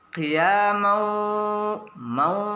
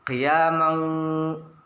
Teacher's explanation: Idgham memasukkan gunnah, itu bi dengan gunnah dengung, memasukkan dengan mendengungkan. Suara tanwin masuk ke dalam huruf waw disertai dengan dengung. Ingat, mendengungkan itu di penghujung hidung yang paling dalam. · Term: idgham bi gunnah